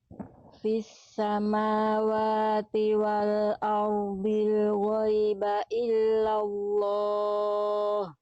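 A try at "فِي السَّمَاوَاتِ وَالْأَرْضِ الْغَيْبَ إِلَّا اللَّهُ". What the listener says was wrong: Ini udah lebih bagus. Tinggal tebalkan huruf dotnya sedikit lagi, angkat pangkal lidahnya. Kita pancing dulu huruf dotnya. Bli.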